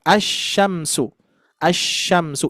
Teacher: Asyamsu idgam kan ya. Lamnya kan enggak dibaca gitu ya